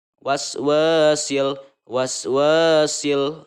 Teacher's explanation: maka ini adalah Alif Lam Qomariah maka cara membacanya harus jelas Idhar